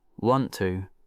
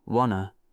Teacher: The T from want and the two just melt together, and the O in two becomes a softer sound, uh. So, want to becomes wanna.